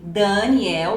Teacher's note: Então, por exemplo, em alguns lugares as pessoas dizem Daniel, ou seja, an, dan, o som é mais nasalado. Em outras regiões as pessoas dizem Daniel, com a vogal mais aberta.